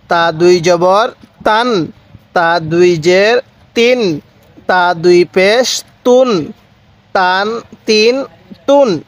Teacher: শব্দটা শেষে দন্তান্ন উচ্চারণ করব, তাহলে এই তানবিনটা সহি উচ্চারণ হবে।